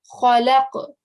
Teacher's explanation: Can you hear at the end here, I'm giving a qalqala sound, giving a jerking sound.